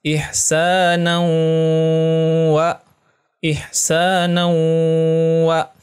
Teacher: ada tanwin bertemu dengan huruf waw. Maka hukumnya adalah idgham bigunnah. Bacanya gunnah ya, dan ditahan selama 2 harokah.